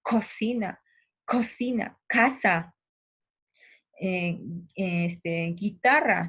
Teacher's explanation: la zona posterior de la lengua entra en contacto con el velo del paladar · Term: velares